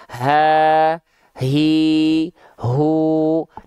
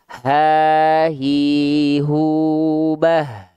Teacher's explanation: Tapi kalau hak besar dia pita suaranya membuka sehingga ada nafas yang mengalir.